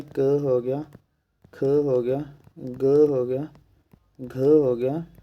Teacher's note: इनका उच्चारण स्थान होता है कंठ